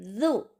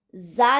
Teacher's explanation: ऊपर के दो दांतों के नीचे के किनारों को जबान की नोक लगनी चाहिए ना कि हम जा की तरह सख्त जा की तरह नहीं बोलेंगे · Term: नरम जु